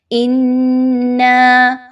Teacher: حمزہ و نون مشدد کا غنہ اچھے سے کیجئے